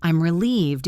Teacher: I'm relieved is usually spoken with a falling, relaxing intonation.